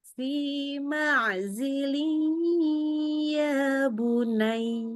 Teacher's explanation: Tanwin ketemu ya-nya. Biasakan ya. dengungkan lebih lama, lewatin hidung.